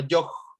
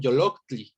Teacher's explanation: La palabra para corazón tiene este yoj ahí con su glotal y todo. Y bueno, va a ser la glotal la que haga que yo, la o larga, se vuelva breve